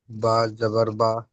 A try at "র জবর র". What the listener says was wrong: বা নয়, র জবর র।